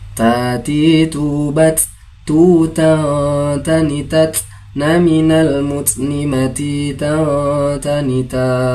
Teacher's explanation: Huruf ta tempat keluarnya adalah ujung lidah bertemu atau menempel dengan gusi bagian atas.